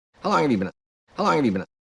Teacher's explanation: So how and long, a little bit longer, a little bit more stressed. These words, have you been a, all four of those words said very quickly.